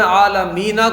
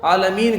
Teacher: مد عارض کا قاعدہ ہوگا. اچھا، ہم نے عالمینہ کو عالمین کر دیا، نون کو ساکن کر دیا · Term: حالت وقف